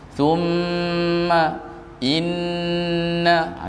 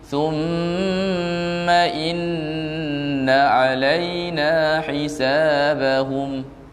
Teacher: Mim dengan huruf nun kalau dia ada syaddah di atas dia kena dengung.